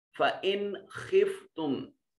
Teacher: میم ساکن کے بعد با اور میم کے علاوہ کوئی اور حرف آ گیا، یہاں اظہار شفوی ہوگا، میم کو ظاہر کر کے پڑھیں گے · خا حروف اظہار، نون ساکن کے بعد نون کو یہاں ظاہر کر کے پڑھیں گے، اظہار کا قانون لگے گا